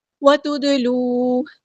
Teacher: دال ساکن ہے، یہاں پہ قلقلہ ہو رہا ہے